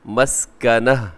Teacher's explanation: آگے وضربت علیہم المسکنہ، مسکنۃ، لیکن وقف کریں گے تو مسکنہ، ایسے تا کو ہا سے چینج کر دیں گے